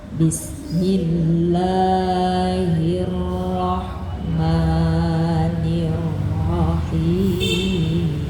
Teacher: nada bismillah naikkan sedikit